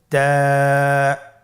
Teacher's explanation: তা হরফটি বারিক হরফ এবং এক আলিফ টেনে পড়তে হবে